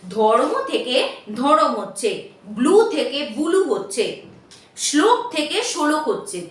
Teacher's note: সংযুক্ত যে ব্যঞ্জন বর্ণ সেটাকে ভেঙে অন্য কোনো স্বরধ্বনি আনয়ন করা হলে সেটাকেই বলা হয় যে মধ্য স্বরাগম বা স্বরভক্তি বা বিপ্রকর্ষ